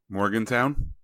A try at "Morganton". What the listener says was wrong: There's no W. So it's actually Morganton.